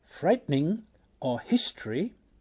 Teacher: the elision of vowels is a result of the rhythmic structure of English, as in frightening or history, where unstressed vowels may disappear.